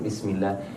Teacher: لما تنطق مثلا قول الله عز وجل بسم الله، زمن الباء سريع والسين أطول، يعني شوف بسم الله، زمن طويل، lebih panjang ketika huruf-huruf yang harokatnya sukun.